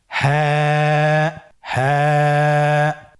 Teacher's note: হা হরফটি উচ্চারণের স্থান কন্ঠনালীর শুরু হতে